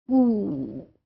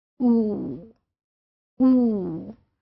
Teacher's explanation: ये प्रोड्यूस करते हुए आपके जो लिप्स हैं they have अटेन्ड rounded position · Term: ऊ साउंड